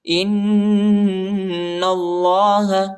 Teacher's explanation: कुल्लमा अज़ाअ लहुम मशौ फीह वइज़ा अज़लम अलैहिम क़ामू وإذا أظلم عليهم قاموا وإذا أظلم عليهم قاموا ولو شاء الله ولو شاء الله ولو شاء الله لذهب بسمعهم وأبصارهم إن الله नून को जो है हमज़ा को नून के साथ मिलाना है और नून को लाम के साथ मिलाना है, ठीक है। और इधर गुन्ना भी है और अल्लाह के नाम को जो है मोटा पढ़ना है, पूरा पढ़ना है।